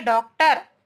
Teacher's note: आ या आ और ओ के मध्य की ध्वनि होती, इन दोनों के बीच की ध्वनि होती है, जो हम मिलाकर हम बोलते हैं।